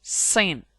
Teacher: S. Voiceless alveolar fricative. Sin.